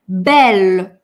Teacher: согласные мягкие, но он взрывной и он четкий